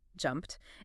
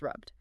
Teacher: You see assimilation elsewhere too. The English past tense ed suffix is pronounced t after voiceless sounds jumped and d after voice sounds rubbed.